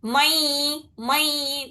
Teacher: دو حرکت غنہ بھی کرنا ہے اس کے ساتھ، ناک میں سے آواز نکالنا دو حرکت تک، یعنی دو انگلیاں کھولنے میں جتنا ٹائم لگتا اتنی دیر تک ناک میں سے آواز نکالنا، ٹھیک ہے؟